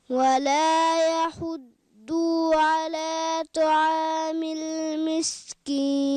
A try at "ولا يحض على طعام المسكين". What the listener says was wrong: হ্যাঁ ওয়ালা ইয়াহুদ্দু একটু টান হয়ে গেল এটা টান হবে না হরকতের উচ্চারণ তাড়াতাড়ি করে পড়তে হয় কেমন ওয়ালা ইয়াহুদ্দু হুদ্দু আলা ওকে তারপরে আমরা শুনবো তোমার নাম কি